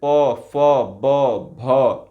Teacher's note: ये होठ से टकरा रहे हैं तो ऐसे जो व्यंजन होते हैं स्पर्श व्यंजन कहलाते हैं वैसे